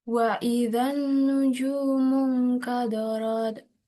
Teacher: Nun di sini gunnah karena nun bertasydid. · ada waw sukun sebelumnya dhammah dibaca panjang 2 harokat